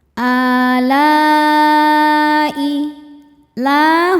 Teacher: Maka lamnya panjang boleh empat boleh lima harakat. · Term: mad wajib muttasil